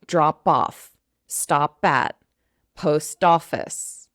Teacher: each consonant connects over to the next vowel